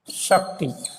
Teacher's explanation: 'च' का उच्चारण 'स' हो जाता है